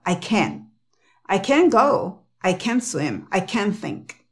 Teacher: el acento va en Ken Y se pronuncia K e n